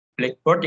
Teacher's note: kalau kita menyebut kata Blackboard atau papan tulis dalam bahasa Inggris Blackboard dengan tekanannya ditaruh di black